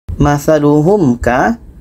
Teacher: Bermakna di sini mim mati bertemu ka, yang dengung itu hanya mim dan ba ya. Bermakna mim mati bertemu ka tidak dengung.